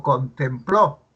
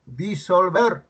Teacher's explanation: Tiene el acento en la última sílaba. La sílaba tónica está en la última sílaba.